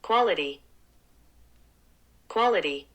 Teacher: 드 소리가 더 난 것보다는 이제 리을에 해당하는 소리가 더 많이 들리죠?